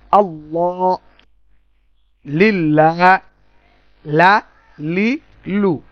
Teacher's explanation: লাম জিহ্বার আগা ওপরে ওপরের দাঁত, মানে উপরের দাঁতের গোড়া মাড়ির দিকের অংশ লাম উচ্চারণ হবে